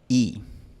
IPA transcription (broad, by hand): i